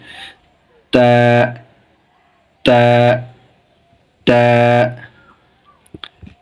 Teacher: উচ্চারণের স্থান জিহ্ববার মাথা সামনের উপরে দাঁতের গোড়ার সঙ্গে লাগিয়ে